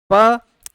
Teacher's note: प का उच्चारण हम दोनों होठों के आपस में जोड़ने से होता है। अतः प का उच्चार स्थान क्या ओष्ठ है।